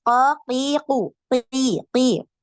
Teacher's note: Huruf qaf itu ketika kasrah dia tipis